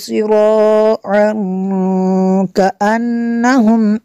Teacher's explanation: تنوین کے بعد کاف ہے حروف اخفا میں سے تو یہاں پہ اخفا ہوگا، اس لیے یہاں پہ غنہ کریں گے۔